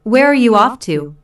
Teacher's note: Notice the falling intonation since this is an information question, not a yes/no question.